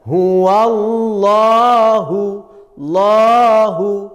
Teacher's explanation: lo itu panjang namanya Mad thi'i dipanjang satu ayunan huwallahu lu jadi panjang tekan Ayun l hu nah seperti itu